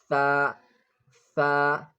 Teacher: The tongue comes slightly between the teeth.